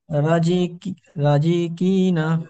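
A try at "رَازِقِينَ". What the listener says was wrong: টান দিয়ে বলেন ভাই। টান দিয়ে বলেন, রটা টান হবে, আলিফ মাদ্দা আছে।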